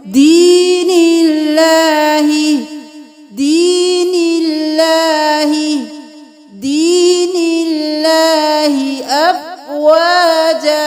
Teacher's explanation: اب دین اللہ بھی نہیں کریں گے، یا ساکن ہے، اس سے پہلے والے حرف پر زیر ہے، یہ یا مدہ ہو گیا، ایک الف کے برابر کھینچ کے لمبا پڑھیں